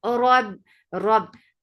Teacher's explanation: Whenever you're saying ra, there is little vibration.